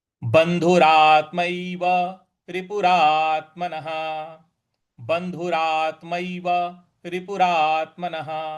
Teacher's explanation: यहाँ रा के बाद आधा त है, तो यहाँ पे भी थोड़ा सा बल लगाएंगे। और न के बाद जो विसर्ग है, तो इसके आगे कोई अगला अक्षर नहीं है, इस वजह से इस विसर्ग को ह के उच्चारण में लाएंगे।